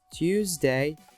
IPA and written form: ˈtjuːzdeɪ (Tuesday)